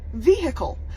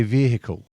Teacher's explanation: some Americans say vehicle with a hard h